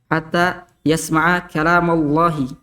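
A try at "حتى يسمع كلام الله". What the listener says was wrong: Terlalu cepat tebalnya tuh. Terlalu cepat tebalnya. Ma tidak tebal. Hatta yasma'a kalam Allahi. Kalam Allah. Kalama. Kalam Allahi. Jadi Allahnya itu yang di tengahnya itu yang tebal, bukan yang pertama. Hatta yasma'a kalam Allahi. Kalam Allah. Setelahnya baru bunyi O-nya. Yang jauh.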